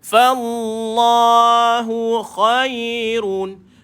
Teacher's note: Fallah, yang ni baru tebal. Kalimah lafzul jalalah baru tebal.